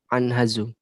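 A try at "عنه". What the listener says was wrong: Itu bukan anhazu ya, itu salah. Yang betul anhu pakai h. Nah, itu za-nya dihilangkan.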